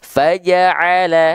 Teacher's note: jelaskan ainnya jangan sampai dia menjadi hamzah, dan jelaskan fathah vokal A kadar tipisnya